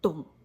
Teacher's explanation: We add a tone mark for this one. The pitch starts low and drops even lower. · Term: third tone